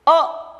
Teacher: इस वर्ण के पूर्ण उच्चारण के लिए केवल एक बार पलक झपकने का समय लगता है, इसलिए यह ह्रस्व वर्ण है।